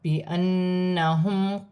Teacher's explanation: نون مشدد میں غنہ ہوگا اور اپنے سے پہلے حرف کی حرکت کے ساتھ ملا کر پڑھا جائے گا۔